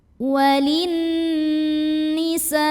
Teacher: Karena ada alif lam yang bertemu dengan huruf syamsiyah yaitu huruf nun. Maka cara bacanya dimasukkan ke nun berikutnya. Jadi alif lamnya tidak dibaca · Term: alif lam syamsiyah